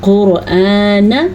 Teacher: اچھا جی، قاف کو پر پڑھنا ہے کیونکہ قاف حروف مستعلیہ میں سے ہے. را کو پر پڑھنا ہے کیونکہ را جو ہے وہ ساکن ہے لیکن را سے پہلے حرف کے اوپر پیش ہے، اسی لیے را کو پر پڑھنا ہے.